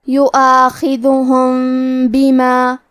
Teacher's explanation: کلمت یؤاخذہم میں حرف الخاء کی ادائیگی حلق کے اوپر والے حصے سے ہے، حرف الخاء حروف التفخیم میں سے ہے، لہذا ہم یہ حرف کو موٹی آواز میں پڑھیں گے۔ آخری میں میم ساکن ہے، پھر حرف البا ہے کلمت بما، با حروف الاخفاء الشفوی میں سے ہے، تو ہمیں میم ساکن کو چھپاتے ہوئے اور غنہ کے ساتھ یہ حکم کو ادا کریں گے۔